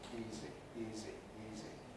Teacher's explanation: in the case of easy on the other hand the voicing continues throughout without any interruption